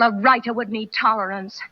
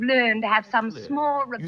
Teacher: she says writer and learn without pronouncing the R because they're followed by consonant sounds